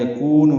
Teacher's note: یکون میں واو مدہ ہے، نون کو معروف طریقے سے جلدی ادا کریں گے